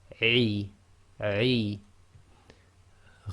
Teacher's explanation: I, again with ayn, it's very difficult. You say, start the sound and then block the throat